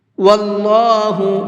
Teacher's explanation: اللہ کے لام کو منہ بھر کے پڑھیں گے، اس لیے کہ اللہ کے لام سے پہلے زبر ہے، اور اللہ کے لام سے پہلے زبر ہوتا ہے تو اس اللہ کے لام کو منہ بھر کے پڑھتے ہیں۔